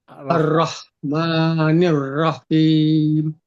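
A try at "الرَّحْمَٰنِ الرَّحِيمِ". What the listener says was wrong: Tapi juga nggak boleh Ar-Rah terus berhenti nggak, langsung mengalir nih. Ar-Rahman. Jadi nggak boleh ada jedanya.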